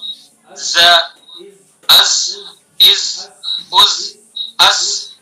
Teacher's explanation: ز زبان کی نوک ثنایا سفلا کا کنارہ نیچے والے دو دانت اور کچھ اتصال ثنایا علیا سے. اتصال کا مطلب کچھ ملانا ہے، ثنایا سفلا سے بھی کچھ زبان کی نوک ملے گی.